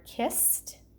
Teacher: at the end of the word kissed, that ed is saying its t sound